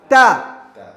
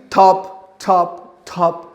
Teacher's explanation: the sound of the ta is clear sound, no air